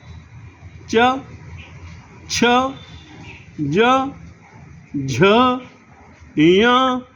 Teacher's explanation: वो तालू को छुएगी छुएगी। और तालू का स्पर्श किए बिना यदि तुम च, छ, ज, झ, य बोलना चाहो, नहीं बोल पाओगे।